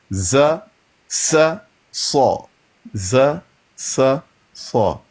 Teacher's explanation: نیچے والے دانتوں کے کناروں سے لگے زا سین صاد ادا ہوتے ہیں